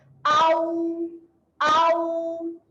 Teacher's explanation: Okay, dan huruf yang keempat, huruf waw, muncungkan mulut. Hamzah nganga waw sukun, muncungkan mulut kat hujung.